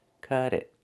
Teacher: We hear the T in cut change to a fast D because it's between vowels.